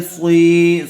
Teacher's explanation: صاد کے بعد یا ساکن آئی ہوئی ہے اس لیے یا مدہ ہوگا، صاد کو تھوڑا کھینچ کر پڑھیں گے